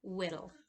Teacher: There's also some allophones of t and d, and it's not quite a t, but it's not quite a d all the way either, and that is an alveolar tap